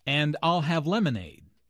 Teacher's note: stresses I'll and lemonade to emphasize her choice